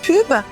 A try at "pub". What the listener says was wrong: On dit pub. En anglais, le U se prononce E.